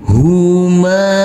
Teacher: Huruf mim kita baca panjang dengan panjang 2 harokat, karena setelah huruf mim yang berfathah ini bertemu dengan huruf alif yang tidak berharokat.